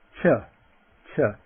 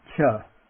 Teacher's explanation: the voiceless aspirate. Remember, a little puff of air.